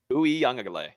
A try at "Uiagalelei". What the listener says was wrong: but you said the G twice. You're still saying, I don't know if it's like your tongue clicking or something, but it sounds like you're saying the G twice.